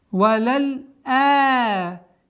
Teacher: И таким образом у нас получается удлинение огласовки хамзы в размере двух огласовок.